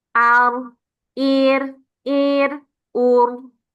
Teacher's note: Ketika dia kasrah itu satu getaran. Ketika fathah dan domah dibaca dua getaran.